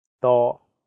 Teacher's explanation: The first character is in high flat tone, first tone.